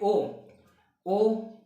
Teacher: आपका कंठ से भी आवाज निकलेगी और आपकी ओष्ठ यानी ओंठ भी आपके काम करेगी, यानी गोल आकृति बनेगी। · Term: कंठ ओष्ठ